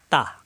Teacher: তা জিহ্বার আগা উপরে দুই দাঁতের গোড়ায় লাগবে